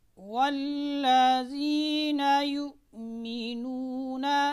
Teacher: दोनों होंठों को ना तमाम मिलाने से हर्फ वाव अदा होता है। ना तमाम मिलाने का क्या मतलब है कि जब आपने वाव को अदा करना है तो होंठ क्या हो जाएंगे, गोल हो जाएंगे, लेकिन मुकम्मल तौर पर आपस में मिलेंगे नहीं।